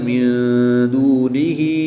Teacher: نون ساکن کے بعد دال حروف اخفا میں سے ہے، تو یہاں پر اخفا ہوگا، یعنی غنہ زمانی کر کے پڑھیں گے۔